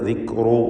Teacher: റാഇകളെ തഫ്ഖീം ചെയ്യണം. തടിപ്പിച്ച റാഇനെ സ്വരഭാരത്തോടെ ഉച്ചരിക്കുക. മലയാളത്തിലെ റാ പോലെ ആയിപ്പോവരുത്. ദിക്റു റു എന്ന തടിപ്പിച്ച ശബ്ദം.